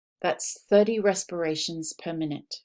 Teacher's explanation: the second syllable is not stressed at all it's very quiet